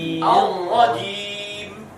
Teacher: Jadi dengan rohnya besar, suaranya banter, jimnya kecil.